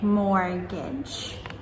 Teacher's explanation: we do not pronounce the T and just say mortgage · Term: silent T